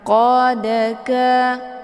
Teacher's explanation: sukun yang terdapat di pertengahan kalimat ini dinamakan dengan Qalqalah Sugra cara bacanya huruf dalnya dipantulkan dengan pantulan ringan · huruf dalnya dipantulkan dengan pantulan ringan. Qadaka, keluar bunyi d. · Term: qalqalah sughra